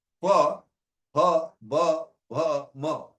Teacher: when we are saying pa, ha, ba, bha, ma, the two articulators are the two lips.